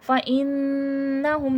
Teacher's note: نون پہ شد ہے، نون مشدد ہے، نون مشدد کا غنہ ہوگا.